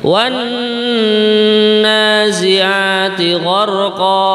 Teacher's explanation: Nah, di sini kita perlu memperhatikan pada huruf nun yang berharokat tasydid. Nah, ini kalau di dalam tajwidnya dibaca gunnah dengan mendengung